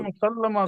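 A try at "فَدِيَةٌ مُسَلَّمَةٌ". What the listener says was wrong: لمبا نہیں کریں، فدیاتن.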